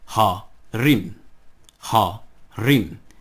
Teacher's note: And the accent is on the resh. So, because of that, hal-harim becomes ha-harim.